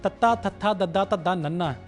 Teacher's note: ਜੀਭ ਸਾਡੇ ਦੰਦਾਂ ਨਾਲ ਆ ਕੇ ਲੱਗਦੀ ਹੈ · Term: ਦੰਤੀ ਧੁਨੀਆਂ